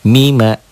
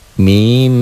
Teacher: Mim, tuh di latennya ada kan M-nya 3. Mim, ditahan double dan dengung